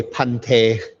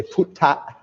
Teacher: the Thai heard the B sound, the unaspirated B sound, or even the aspirated B sound as a P